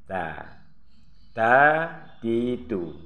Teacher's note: Nah, ini makratnya atau letak hurufnya yaitu di ujung lidah dengan urat gigi yang di atas, gigi seri